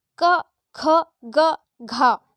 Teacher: बोलने पर सर्वाधिक बल हमारे कंठ पर पड़ रहा है, इसलिए घा का उच्चारण स्थान कंठ है